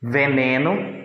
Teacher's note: aqui logo primeiro exemplo dos sons surdos a sanções que não apresentam vibração das cordas vocais no momento da produção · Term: sons sonoros